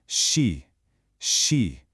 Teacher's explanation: It's just the sound of the air hissing out slowly, continuously, a soft sound. So, she isn't a burst at all. It's a smooth, soft, gentle release of air. You keep your tongue fixed and you just let that air flow.